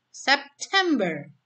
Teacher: Jadi ada 3 silabel yang ditekankan yang tengah. Yang silabel sebelum dan setelahnya tidak ditekankan. Contoh September.